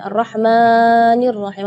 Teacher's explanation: tidak boleh lebih madnya dari dua harakat